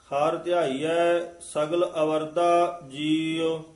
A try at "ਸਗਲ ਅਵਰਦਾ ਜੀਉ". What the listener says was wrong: ਇਸ ਨੂੰ ਅਵਰਦਾ ਉਚਾਰਨ ਕਰਨਾ ਹੈ। ਅਵਰ, ਅਵਰਦਾ ਨਹੀਂ ਕਹਿਣਾ, ਐੜੇ ਤੋਂ ਡੈਸ਼ ਦੇ ਕੇ ਅਵਰਦਾ ਜੀਉ।